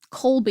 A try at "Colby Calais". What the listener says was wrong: I don't think Colby's their actual name. Colby. You're kind of like holding the L down a little too long. No, Colby Calais.